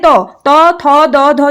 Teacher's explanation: त वर्ण का उच्चारण स्थान यहाँ पर है दंत्य। तो दंत्य से हमारे त थ द ध जो आते हैं उसका जो उच्चारण स्थान होगा दंत्य होगा।